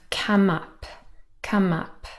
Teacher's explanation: come ends in um a nasal and that's also a consonant sound